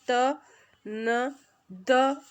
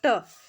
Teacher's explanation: त, न और द, इन तीनों में तो हम दांत से हमारी जो जीभ है उसको टच करते हैं, जबकि ट बोलते समय हमारी जो जीभ है, जीवा है, वो दांतों से टच नहीं होती, इसलिए ट यहाँ पर करेक्ट ऑप्शन हो जाएगा।